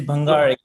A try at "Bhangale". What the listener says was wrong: So you got the vowels right, but the last consonant or the semi-vowel consonant you have to work on. The L.